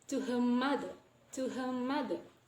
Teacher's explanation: So we don't pronounce the R, but we change it to the M sound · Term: regressive assimilation